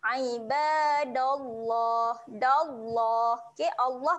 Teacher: Allah ni kita akan baca satu panjangkan dua harakat